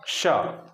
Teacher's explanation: इसमें जो आपकी जीभ है ना वो आप देखेंगे कि आपके दांत से ठीक पहले थोड़ा सा ऊपर की तरफ छूने का प्रयास कर रही है, लेकिन छू नहीं रही।